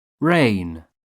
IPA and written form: reɪn (rain)